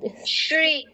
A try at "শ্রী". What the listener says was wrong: আমরা বাংলায় যেমন বলি না সদা সত্য কথা বলবে, তো এখানে স এর উচ্চারণটা যেমন হচ্ছে সংস্কৃত তালব্যস্যর উচ্চারণটা ঠিক তেমন। আগে শ্রী চলে এসেছিল, শ্রী বললে হবে না, শ্রী হতো যদি দন্তস্ব থাকতো।